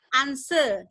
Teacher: Jadi kalau misalnya Amerika dia answer tuh pakai R. Tapi ini adalah answer, R-nya dihilangin kan ketika dia British.